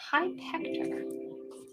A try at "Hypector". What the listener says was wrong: No, it's all one word. Hypecta. Hypector.